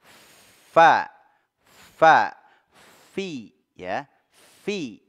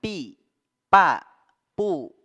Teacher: ada di ee perut perut bibir perut bibir bawah ya jadi bagian yang basah bibir bawah bertemu dengan ujung dua gigi seri atas ini huruf fa fa Bukan PA bukan dua bibir disatukan pa · Ya, menyentuh ujung dua gigi seri atas. Fa, ya, disertai dengan adanya aliran udara. Dia punya sifat hams.